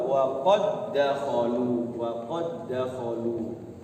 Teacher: Yang tadinya wa qad dakhalu, dalnya tidak boleh dikolahkan karena dal sukun itu masuknya huruf qalqalah, sehingga masuk saja kepada dal yang kedua, wa qad dakhalu, wa qad dakhalu. Tidak boleh ada qalqalahnya. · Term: idgham mutamasilain